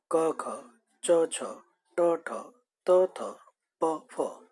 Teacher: स्वर तंत्री में जब कंपन होता है तो सघोष ध्वनियां उत्पन्न होती हैं और कंपन नहीं होता तब अघोष ध्वनियां उत्पन्न होती हैं। अघोष जिन ध्वनियों के उच्चारण में स्वर तंत्रियों में कंपन न हो वह वर्ग का पहला और दूसरा व्यंजन मिलता है, जैसे क ख, च छ, ट ठ, त थ, प फ।